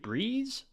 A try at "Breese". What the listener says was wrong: The S, it's Breese.